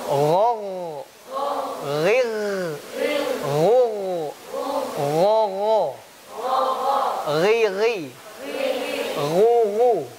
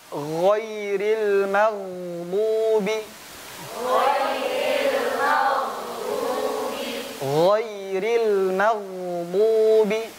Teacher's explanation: pengucapan ghain pastikan suaranya mengalir, jangan tertahan. Ya, kadang kita mengucapkan ghain tertahan suaranya.